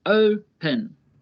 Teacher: The verb open has two syllables, open. The first syllable is stressed, open. Stressed means there is more emphasis on that syllable.